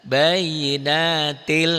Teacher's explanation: Bayinatil masuk ke L, tapi tanpa ditahan, makanya idgham bila gunnah tanpa dengung.